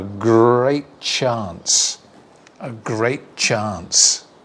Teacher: A great chance. We lose the t and say a great chance. A great chance.